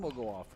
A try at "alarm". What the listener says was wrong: You really need to make sure you need the L in that. You said arm will go off. Alarm. Not his arm.